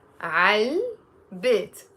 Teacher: We make a liaison and we say عل بيت